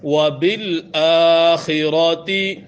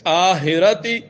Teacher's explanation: کھڑا زبر کھینچنا ہے، خا کو واضح پڑھیں گے۔ آخرتی غلط ہے۔